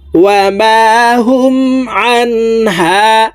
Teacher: এই নুন সাকিনকে গুন্নাহ ছাড়া স্পষ্ট করিয়া পড়ব